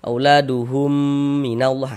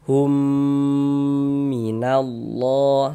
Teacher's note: mim sukunnya masuk melebur ke huruf mim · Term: idgham